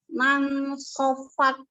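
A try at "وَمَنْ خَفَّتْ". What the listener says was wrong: Fa-nya belum ngalir. Harus sama dengan kho ya, ngalir terus. Wa man khaffat. Khaf.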